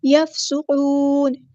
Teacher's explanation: فا کو ہلانا نہیں ہے اور سین کی سیٹی واضح کرنی ہے ، قاف ہمارا ہیوی لیٹر پورا ادا کریں گے اور نون · قاف ہمارا ہیوی لیٹر پورا ادا کریں گے اور نون کو ہم ساکن کر دیں گے وقف کرتے ہوئے ، اور مد عارض بھی ہوگی یہاں پر، وَإِذِ اسْتَسْقَىٰ مُوسَىٰ،